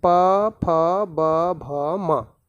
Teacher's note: इनका उच्चारण स्थान ओष्ठ होता है, होठ के माध्यम से ये बोले जाते हैं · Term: ओष्ठ वर्ण